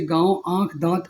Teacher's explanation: जो जो स्वर के बाद व स्वर से स्वतंत्र आते हैं अनुनासिक ऐसे स्वरों का उच्चारण नाक और मुंह से होता है